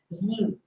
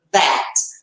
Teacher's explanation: a minha língua está entre os dentes. Eu sinto aqui vibrar e dá até uma coceirinha na ponta da língua. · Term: voiced